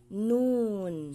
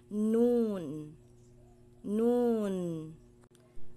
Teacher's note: ang posisyon ng dila nasa taas ng gums